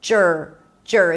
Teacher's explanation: The next syllable is j'r. You start with a j sound and you move it directly to the R. J'r. There is no vowel in between.